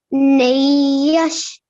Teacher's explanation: you pronounced it with a nasal sound which you held for two seconds